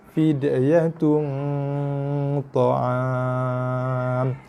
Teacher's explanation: Dan dengungnya bunyi di rongga hidung.